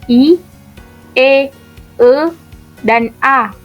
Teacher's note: vokal yang dihasilkan oleh gerakan turun naiknya lidah bagian depan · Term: vokal depan